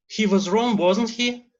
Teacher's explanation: So it's rising intonation that goes to the tag in the end.